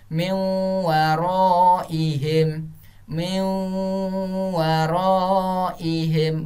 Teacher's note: berarti nun matinya tidak dibaca tapi didengungkan antara miu